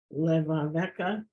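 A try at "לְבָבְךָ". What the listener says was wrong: Levavcha. Levavcha. The cha is at the end.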